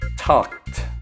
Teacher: The ED sounds like a t because the final sound in the base verb talk is k. The k sound is unvoiced, and therefore the ED sounds like a T. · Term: t sound